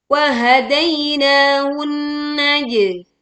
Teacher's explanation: di sini ada nun bertasydid, sempurnakan dengungnya